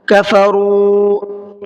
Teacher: را کے اوپر پیش ہے تو اس کو منہ بھر کے پڑھنا ہے، اور دوسرا قاعدہ ہے واو مدہ کا۔